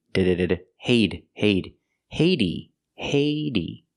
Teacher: pronounce the h hey use a long a like say and pay hey the T changes to a fast D